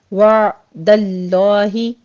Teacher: عین کو جھٹکا نہیں دینا، سٹاپ کرنا ہے، وسط حلق میں ساؤنڈ لے جا کے سٹاپ کر لینا ہے